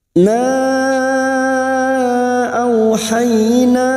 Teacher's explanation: Mad jaiz munfasil kita panjangkan 4 atau 5 harokat, tetapi kita pilih salah satu, 5 harokat kita panjangkan.